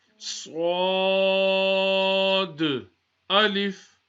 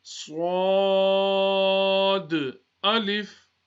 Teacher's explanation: first a whistle sound, then full mouth, and then we read the alif